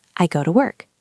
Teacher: But in a sentence, we almost never say to with a long oo sound. We say ta.